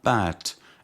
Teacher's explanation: The initial sound of bat is bilabial because both lips come together